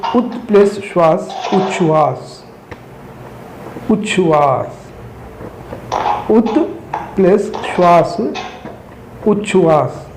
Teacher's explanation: त का मेल यदि शा से त का च और श का छू बन जाता है।